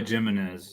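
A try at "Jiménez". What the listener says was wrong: well, you have to pronounce it Jimenez, no J, Jimenez, because I like Mr.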